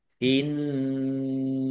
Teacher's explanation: Allahnya dibaca tebal karena harokat di depannya fathah